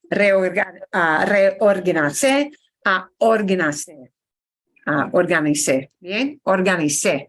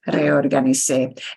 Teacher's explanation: Punch the end so that we know it's pretérito